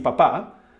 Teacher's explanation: sounds like P in English as in pie or appear but shorter